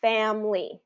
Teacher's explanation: we've reduced it down to two syllables